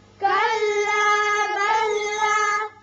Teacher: یہاں لام ساکن کے بعد لام مشدد ہے، اس میں ادغام ہو جائے گا